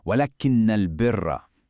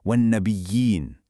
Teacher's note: You hear that extended nasal sound? That's our old friend, the ghunnah.